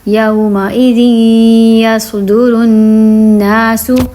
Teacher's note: اب یہاں پہ کیا ہو رہا ہے، را نون سے مل رہا ہے کیونکہ تشدید ہے اور یہاں پہ ہو رہا ہے غنہ، ناک میں آواز نکال رہے ہیں